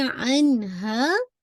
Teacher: हाँ को आपने अलिफ मत दिया है, टू काउंट स्ट्रेच करना है